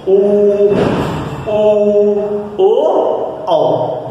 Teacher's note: जो हमारे ओठ हैं वह गोलाकार रूप धारण करते हैं, इसलिए इन स्वरों को कहते हैं वृत्ताकार स्वर।